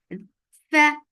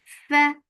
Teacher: Fa, give hams in fa. Whenever you look on fa, whichever state it is in, you are giving hams, and hams is flow of breath.